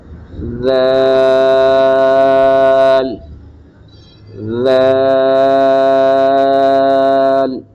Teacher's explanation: زبان کا سرا اوپر کے دانتوں کے اندرونی کنارے سے ٹکرائے تو اس سے ادا ہوتا ہے